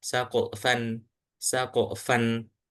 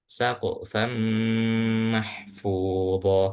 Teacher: Nah, akan tetapi ini kita langsung masuk ke huruf mim. Jadi nunnya itu seakan-akan hilang. Jadi langsung ke saqfam mahfud atau singkatnya seperti ini.